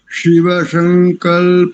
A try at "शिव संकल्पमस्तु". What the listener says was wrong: एक शब्द को ठीक करो, एक अक्षर का उच्चारण ठीक करो। शिव संग, शिव संग, दंत्य सकार है यहाँ पर। शिव में तालव्य और संग में दंत्य। संकल्प, शिव संकल्प।